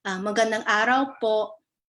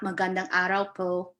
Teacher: When heritage language learners or second language learners practice this, they may say po and just elongate the O, but there is a stop at the end where you kind of cut off your breath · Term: glottal stop